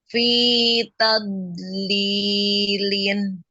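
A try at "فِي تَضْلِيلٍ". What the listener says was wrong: Ya, tadlilin. Ya, bo-nya masih belum nempel ke atas ya. Ditebalkan. Fi tadlilin. Tadlilin.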